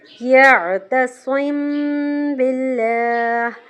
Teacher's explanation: میم ساکن کے بعد با آ جائے تو وہاں بھی غنہ کریں گے اور اس رول کا نام ہے اخفا شفوی۔